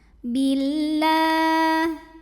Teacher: Lam pada lafaz Allah dibunyikan secara tarqiq sebab huruf sebelumnya berbaris kasrah yaitu huruf ba. Maka dibacanya tipis. Lah pangkal lidah tidak perlu naik.